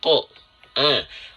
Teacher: Seharusnya dibaca dengan huruf vokal 'A'. Namun mengapa huruf qof, ketika memiliki fatha, terdengar seperti vokal 'O' dan bukan 'A'? Bunyinya bukan seperti 'A' tetapi seperti vokal 'O' . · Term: huruf yang tebal